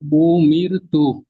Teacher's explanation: র সাকিনের ডানদিকে জের এসছে তাই রকে বারিক করে পড়িতে হইবে